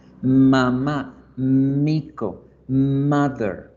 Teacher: la m se llama nasal y labial porque yo cierro los labios para que el aire se vaya por la nariz · el aire se vaya por la nariz y hacemos el sonido el sonido de la m realmente se produce en la fosa nasal